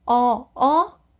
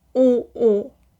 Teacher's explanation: with the O, your mouth is open a little bit wider and the sound is a bit brighter or higher. And with the U, your mouth is really almost closed. There's just this tiny little hole and it sounds a little bit deeper.